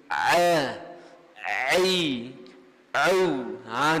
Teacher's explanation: Huruf ain, makhraj dia di tengah. Mesti kena tekel suara kita ke tengah kerongkong.